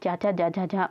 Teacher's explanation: तालब व्यंजन जो हमारे तालू से बोले जाते हैं